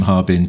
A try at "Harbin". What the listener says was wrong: It's 3 syllables. Yeah, so when you read it, it looks like it's Harbin, 2 syllables, but it's actually Harbin. So it's 3, because it's three characters in Chinese.